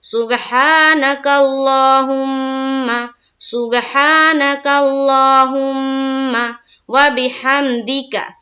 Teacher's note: میم مشدد کا غنہ کریں گے اور زبر کے ساتھ پڑھیں گے۔ سبحانک اللہم، سبحانک اللہم وبحمدک، واو کو زبر کی حرکت کے ساتھ پڑھیں گے جلد، با کو زیر کی حرکت کے ساتھ، ہام کو میم میں ملائیں گے اور دال کو زیر کی حرکت کے ساتھ، معروف اور کاف کو بھی زبر کی حرکت کے ساتھ جلد پڑھیں گے۔